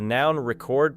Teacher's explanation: the noun record places stress on the first syllable